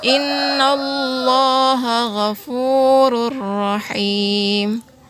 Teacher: dalamnya yaitu ada di tanwin oh nah bertemu dengan huruf roll Jadi tanwinnya langsung saja dimasukkan ke huruf ra dan tidak perlu dikasih dengungan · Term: idgam bilagunnah, idgham bila gunnah